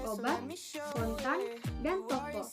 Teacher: Vokal ini terbentuk dengan kedua bibir sedikit ke depan dan sedikit membulat, dan bagian belakang lidah sedikit terangkat, tetapi sedikit lebih rendah dan kurang bulat dari U. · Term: Fonem O